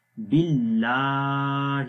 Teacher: یاد رکھیں۔ تو یہاں پر آپ دیکھیں اللہ کا نام ہے، اس سے پہلے زیر ہے با کے نیچے، تو اس لیے اللہ کا نام باریک پڑھیں گے ، باللہ، اور لام کو لمبا کریں گے، اس کے اوپر